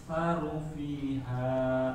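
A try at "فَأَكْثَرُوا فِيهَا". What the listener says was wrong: Runya kurang panjang.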